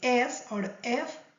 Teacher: But if you say S or F, there is no vibration.